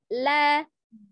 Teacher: Kalau huruf lam itu tepi lidahnya secara bersamaan bertemu dengan gusi atas